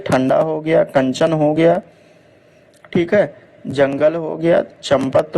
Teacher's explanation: नाग से निकलती है और उच्चारण झटके के साथ होता है वायु जो होता है यह नाक से निकलता है और उच्चारण जो है झटके के साथ होता है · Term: अनुस्वार